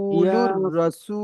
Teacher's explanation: সিন র ওয়া পেশ র সু, র রটা দুবার উচ্চারণ হবে, তাহলে র জাবার র।